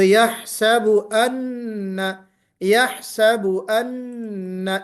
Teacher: یحسب ان بالکل نون کا جو اپنا مخرج ہے وہاں سے نکالنا ہے، یہاں پہ اخفا نہیں کہ آواز آپ چھپا کر نکالیں، اخفا کی کیفیت نہیں پیدا ہونا چاہیے، اون جیسے آپ نے پڑھا اس طرح نہیں ہونا چاہیے۔